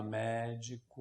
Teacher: a sílaba tônica é a antepenúltima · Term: proparoxítonos